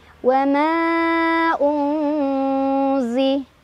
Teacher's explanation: Cara bacanya nun sukun dibaca samar sambil berdengung. Samar dan dengungannya seimbang. Unzila min ikhfa ab'ad karena ada nun sukun bertemu huruf qaf. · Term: ikhfa ausat